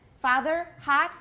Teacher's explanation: But in American, father, hot, they have the same vowel, ah. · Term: ah sound